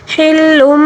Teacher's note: حلم، لام کے اوپر 2 پیش ہے، 2 پیش یعنی تنوین کے بعد جب بھی با آ جائے تو تنوین کو چھوٹی سی میم جو لام کے اوپر نظر آ رہی ہے نا، اس کو تنوین کو چھوٹی سی میم کے ساتھ تبدیل کر کے غنّے کے ساتھ پڑھنا ہوگا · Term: اقلاب